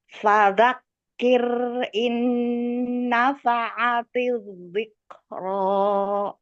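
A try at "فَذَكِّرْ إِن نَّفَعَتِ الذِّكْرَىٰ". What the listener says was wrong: Pak, ulangi lagi. Kafnya kayak keluar ya. fadzakir. Yang belakang ya sudah, yang depan masih fadzakir, fadzakir ya. Fadzakir ya. Fadzakir.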